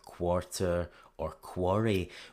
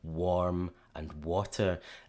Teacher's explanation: We tend to want to put an aw sound after w, so after the sound made by the W here.